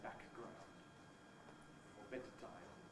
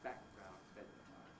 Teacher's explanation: Of course, what we normally do is we run them together to make a single long plosive of the kind that comes in Italian or in Japanese